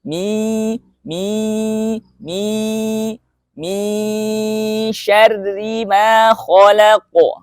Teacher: Makhraj shin yaitu apabila makhraj shin itu adalah bagian pertengahan lidah mengangkat ke atas ke arah langit-langit, lalu di situ ada udara menyebar di atas permukaan lidah